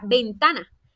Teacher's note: Esta palabra tiene su sílaba tónica en la sílaba ta y no marcamos la tilde porque termina en vocal.